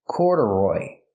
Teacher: So the second syllable is not stressed. It's pronounced relaxed.